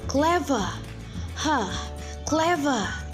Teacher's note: But British will say clever, clever. The R sound at the end disappear.